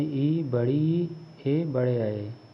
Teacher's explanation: अग्रस्वर, जिनके उच्चारण में जीभ का अग्र भाग सक्रिय रहता है